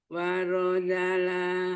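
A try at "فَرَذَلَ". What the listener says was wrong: Fa bukan wa, fa. Farozala. Tadi kurang keluar suaranya. jangan ketahan.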